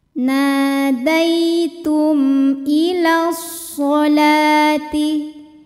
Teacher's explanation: mim sukun kan bunyinya m, maka kalau menghadapi hamzah tetap saja m dan tidak perlu ditahan